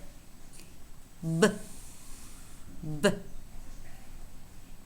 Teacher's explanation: but is a voiced bilabial stop